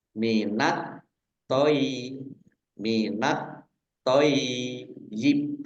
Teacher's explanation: Minat toyib alif lam samsiyah karena tidak dibaca langsung masuk ke huruf berikutnya yaitu to, ditandai toknya ada tasdidnya. Toknya dibaca double. Kemudian yaknya juga dibaca double.